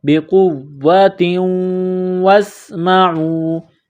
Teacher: بقوۃ، تا کے نیچے دو زیر تنوین ہے، تنوین کے بعد واو ہے، واو مشدد ہے تو واو کو دبانا ہے۔